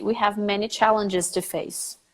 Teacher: There is a vowel between the G and the S, very clearly.